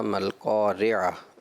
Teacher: را جو مکسور ہے اس کو تھوڑا مجہول کر کے ادا کیا ہے آپ نے